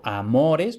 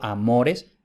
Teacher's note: Entonces, la O es larga porque lo digo yo o porque lo dice el diccionario. Entonces, como la O es larga y está en la penúltima sílaba, eso hace que la penúltima sílaba sea la tónica, por tanto, amores es llana.